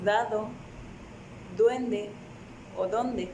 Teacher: se forman con el ápice de la lengua contra los incisivos superiores